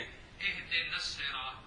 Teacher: پھر سواد کا سواد میں ادغام کیا تو بن گیا الصراط